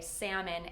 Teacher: You just simply say salmon and omit the L sound.